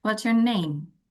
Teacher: Jadi ketika pertanyaan tersebut membutuhkan penjelasan yang tidak hanya iya dan tidak, maka Anda gunakan intonasi turun. Contoh, what's your name?